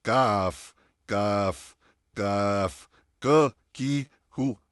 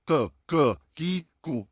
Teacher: बारीक काफ के लिए हम क्या करते हैं, सेम जुबान का आखिरी हिस्सा हमने लिया, लेकिन अब हम जो हमारा नरम तालू जहाँ पे ख़त्म होता है और सख्त तालू स्टार्ट होता है, वहाँ पे हमने अपनी जुबान की आखिरी हिस्से को लगाना है